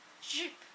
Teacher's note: j sound is a voice sound so when you put your hand in your throat you you'll feel you could feel the vibration in your throat and in your tongue let's break this with some breath practice